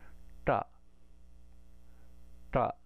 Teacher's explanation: if we curl it back really strong you can hear that retroflex quality · It's kind of like to remind us of the curl of our tongue here. So we're curling our tongue up, the tip of the tongue up to the roof of the mouth and making the sound ta, ta. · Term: cerebral